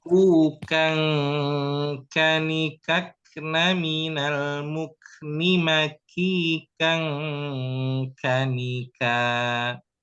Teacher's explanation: ikhfa dan ikhfa pada huruf kaf ini dia dari hidung